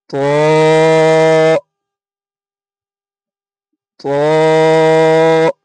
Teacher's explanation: জিভের আগা এবং সামনের ওপরের দুই দাঁতের গোড়ার সাথে লাগিয়ে উচ্চারিত হয় ত